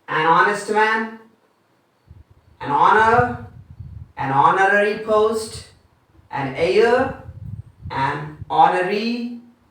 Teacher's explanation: So all the H's are silent. The H sounds are silent.